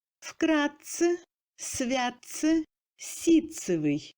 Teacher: Т-Ц se prononce comme Ц long.